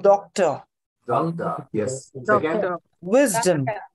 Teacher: Accent on the first syllable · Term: primary accent